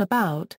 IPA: əˈbaʊt